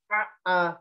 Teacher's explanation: pastikan hamzah ini keluar dari pangkal, bukan dari tengah